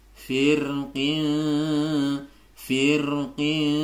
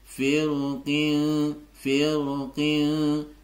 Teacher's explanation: ya yang pertama saya baca tipis Kemudian yang kedua tadi dibaca tebal